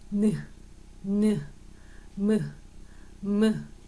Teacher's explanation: 폐에서 나온 공기의 대부분을 코로 내보내면서 내는 소리예요. 니은, 느, 무. 그 다음에 폐에서 나온 공기가 대부분 코로 나가는 게 느껴져요. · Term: 비음